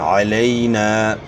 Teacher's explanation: یائلین کو نرمی سے بغیر جھٹکے ادا کرنا ہوتا ہے اور معروف ادا کرنا ہوتا ہے، مجہول سے بچنا ہوتا ہے۔